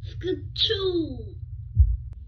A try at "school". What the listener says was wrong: No. No, the CH make the K sound. No, it's school.